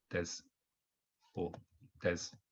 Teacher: some people also um drop the u sound at the end